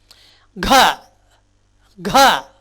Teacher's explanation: தொண்டையிலிருந்து தான் வரணும். ஆனால் கானாவை விட கா சொல்லும் பொழுது ஹா உச்சரிப்பு சேர்த்து அழுத்தமாக சொல்லணும்.